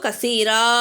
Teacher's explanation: இங்கே நிப்பாட்டுறோம். அதனால் ரா நீட்டுறோம்.